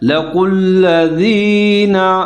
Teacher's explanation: قوف موٹا پڑا جائے گا، آگے لام کے ساتھ ملا کر پڑا جائے گا، لام مشدد ہے۔